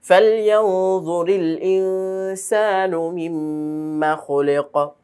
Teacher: মিমে তাজদীদ হলে গুন্না হয়, আমরা এখানে ওয়াজিব গুন্না করব।